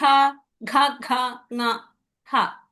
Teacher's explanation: ఎక్కడి నుంచి వస్తున్నాయి పలికేటప్పుడు? కంఠం నుంచి వచ్చాయి కాబట్టి వీటిని కంఠవ్య అన్నాం. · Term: కంఠ్య